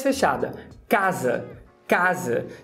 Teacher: o segundo A, ele é escrito assim como o primeiro, mas ele é pronunciado com a boca um pouco mais fechada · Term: redução